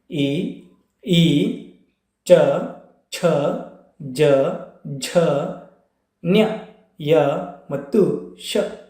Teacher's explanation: ತಾಲವ್ಯ ಅಕ್ಷರಗಳು ಯಾವಂದರೆ ಎಲ್ಲಿ ಹುಟ್ಟುತ್ತಾವೆ ಅಂದರೆ ದವಡೆ ಮತ್ತು ನಾಲಿಗೆ ನೆರವಿನಿಂದ ಹುಟ್ಟುವಂತಹ ವರ್ಣಗಳಿವೆ